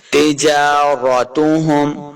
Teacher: جیم کے اوپر کھڑی زبر ہے، اس کو دو حرکات لمع کریں گے